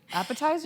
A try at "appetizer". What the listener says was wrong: No, I actually love the way you say appetizer because you've always said it like Appetizer. With an R, an extra R. Appetizer.